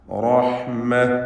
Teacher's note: റഹ്മ റാഇന് തഫ്ഖീം കൊടുക്കേണ്ടതാണ്. തടിപ്പിച്ച് സ്വരഭാരത്തോടെ റാ ഉച്ചരിക്കുക.